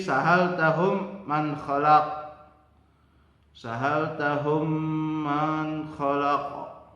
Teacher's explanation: mim mati ketemu mim, bibir atas sama bibir bawah bacaannya adalah dirapatkan dan panjangnya adalah 1 alif atau 2 harokat. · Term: idgham mutamatsilain